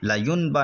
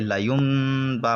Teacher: نون ساکن کے بعد با آئے تو انقلاب ہوگا، یعنی نون ساکن کو چھوٹا سا جو میم دکھ رہا ہے اس سے بدل کر پڑھیں گے